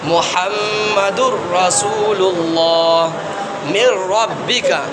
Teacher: تنوین کے بعد یا نون ساکن کے بعد لام آ جائے یا را آ جائے تو اس صورت میں دوسرے والے حرف کو ملا کر بغیر غنہ کے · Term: ادغام